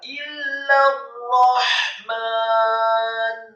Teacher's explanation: Setelah ra-nya ditasydidkan, fathah tafkhim 1 harokat, kemudian ha-nya dibaca sukun. Ar-Rahman. Ha-nya dibaca sukun tipis, kemudian mimnya dibaca fathah 2 harokat, dan nunnya dibaca sukun.